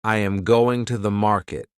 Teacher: in the sentence, I am going to the market, the strong words are going and market. The small words are softer. This pattern creates rhythm.